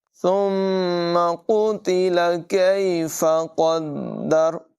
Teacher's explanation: یہاں پر دو نقطوں والا قاف ہے، اس کو پر آواز میں موٹی آواز میں پڑھیں گے، اور یہ والا جو کاف ہے اس کو باریک آواز میں پڑھیں گے۔ · میم مشدد میں غنہ ہوگا